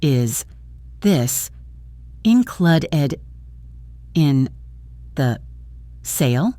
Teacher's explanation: The first two words, is this, link together with the S sound so it becomes is this.